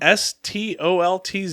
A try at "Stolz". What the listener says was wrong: No, Stolz. No TZ. Just Z. Because German, the Z is pronounced st. There's no T.